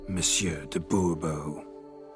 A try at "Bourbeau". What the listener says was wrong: The emphasis falls on the last syllable. Bourbeau?